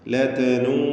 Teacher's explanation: വാവിനെ 4 or 5 ഹറക്കത്തിൻ്റെ അളവിൽ ദീർഘിപ്പിക്കൽ നിർബന്ധമാണ്. മുത്തസിൽ എന്നാൽ ചേർന്ന് വന്നത് എന്നതുകൊണ്ട് ഉദ്ദേശിക്കുന്നത് ദീർഘാക്ഷരമായ വാവും ശേഷം ഹംസയും ഒറ്റ പദത്തിൽ വന്നു എന്നതാണ്. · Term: മദ് മുത്തസിൽ വാജിബ്